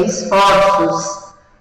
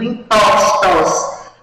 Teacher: quando eu os coloco no plural, o som é aberto. A vogal tônica é aberta